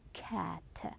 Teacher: we are stopping the air when we are saying C cat it's not air flow we're having a stop for the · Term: c sound